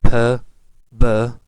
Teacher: Why this is called bilabial closure? Because the lips come together and the closure is there.